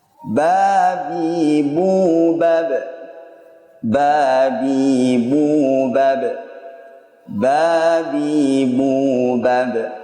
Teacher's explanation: ba ini mempunyai sifat khusus yang ia miliki, yakni qalqalah atau pantulan, dikarenakan tertahannya suara dan nafasnya. · Huruf ba ini keluar dari dua bibir secara bersama-sama. Kemudian bila kita amati dari sifat-sifatnya, maka huruf ba ini dari sisi nafas, nafasnya tertahan.